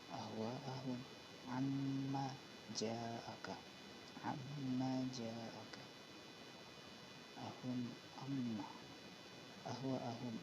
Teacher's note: Amma ahum, amma di sini ada mem sukun bertemu dengan ain. Hukumnya di sini adalah izhar syafawi. Kalau izhar syafawi dibaca jelas, tidak mendengung.